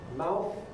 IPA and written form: maʊθ (Mouth)